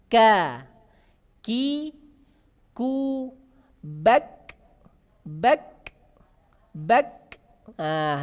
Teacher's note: kalau kaf ada nafas yang berjalan keluar.